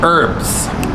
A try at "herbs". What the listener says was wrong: There's an H in there, bro. Pronounce it. Herbs.